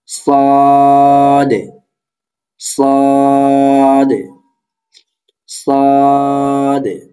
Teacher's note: সদ হরফটি কোথা থেকে উচ্চারিত হবে, আগে ঝা এবং সিন যেখান থেকে হয়েছে সদ সেখান থেকে উচ্চারিত হবে, কিন্তু সদ হরফটি হচ্ছে মোটা। জিহ্বার আগা, সামনে, নিচে, দুই দাঁতের আগার সঙ্গে লাগাইয়া সদ উচ্চারিত হবে।